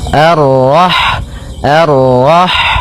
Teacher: Kemudian pada lafal rah di sini ada huruf ha, ha yang berharakat sukun, dan sifat ha itu yang paling mencolok adalah sifat hamsnya, yaitu mengalirnya nafas ketika kita membacanya